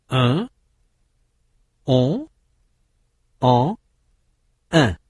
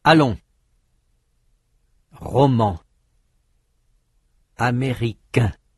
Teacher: They are vowels. No consonant sound N is heard. But they are nasal vowels because when they are pronounced, part of the air goes through the nose.